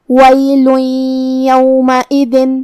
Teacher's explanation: یا حروف الادغام بغنہ میں سے ہے اور ادغام کا معنی ہے حرف کو حرف میں داخل کرنا تو ہم یہ تنوین کو یا میں ملا کے غنہ اور تشدید کے ساتھ یہ حکم کو ادا کریں گے